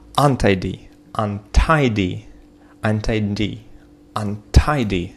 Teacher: Ударение на слог второй · Часто бывает, когда у вас есть префикс, то ударение падает после префикса на корень слова tidy